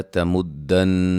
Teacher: نون مشدد پہ غنہ ہے